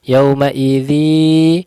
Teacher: tanwin bertemu ya, dimasukkan ke huruf ya, kemudian dilamakan, didengung, dilamakan, ditipiskan. Idzi yaus masuk ke yaus, so sukun maka ditebalkan karena huruf tebal.